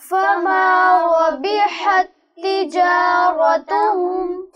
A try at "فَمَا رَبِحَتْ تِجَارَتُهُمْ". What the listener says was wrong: نہیں بیٹے یہاں حرکت کی غلطی ہوئی ہے. فما ربحت تجارتهم تا کے بعد تا مشدد موجود ہے, یہاں ادغام ہوگا, دونوں تا کی ایک ساؤنڈ پیدا ہوگی. فما ربحت تجارت, یوں آپ اس کو ادا کریں گے.